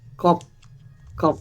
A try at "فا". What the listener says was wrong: ফা, ফা, ফা। এক নুক্তা মাথাগুলো কি ফা, আর দুই নুক্তা মাথাগুলো হচ্ছে কফ। একটা হচ্ছে ফা, আর একটা হচ্ছে কফ। এক নুক্তা ফা, দুই নুক্তা